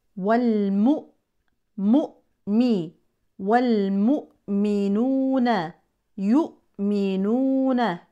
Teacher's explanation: لابد من قطع الصوت الهمزه الساكنه لا صوت فيها ولا نفس